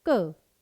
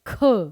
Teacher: अगर मैं कहती हूं क, इजीली बोला गया क। एक होता है ख, पूरी जान लगा के बोला गया।